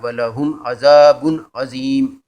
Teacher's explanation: بے پر تنوین ہے، یہاں پہ غنہ اس لیے نہیں ہوگا کہ آگے عین آ رہا ہے. ولہم عذاب عظیم، عین زبر آ، زال زی، عظیم.